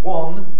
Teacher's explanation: in the north of england it's often pronounced one with the vowel the same as my name